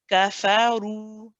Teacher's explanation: Okay, it is also 2 counts. Okay, so the ra, we have to make it heavy and we have to prolong it. So after saying na and the ka and the fa, all 1 count, the ru is then prolonged just as long as we prolonged the the.